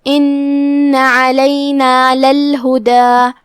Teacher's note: حرف العین ہے، ہم اسے حلق کے درمیان والے حصے سے ادا کریں گے. کلمت للہدا میں یہاں لام پہ زبر ہے، لہذا دھیان رہے لام کو زبر سے پڑھنا ہے.